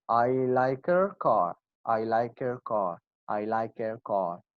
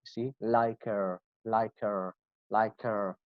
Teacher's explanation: we said we do not pronounce H sound